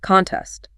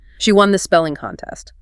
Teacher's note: Contest. Stress on con. She won the spelling contest. Simple, front-loaded, clear.